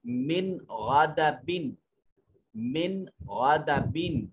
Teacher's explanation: نون ساکن کے بعد اگر غین موجود ہو تو اظہار ہوگا، جیسے من غادبن، من غادبن نون ساکن ہے، اس کے بعد غین حروف حلقی میں سے ہے، یہاں نون کو واضح کر کے پڑھیں گے۔